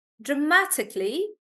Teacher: Dramatically. Stress is on ma.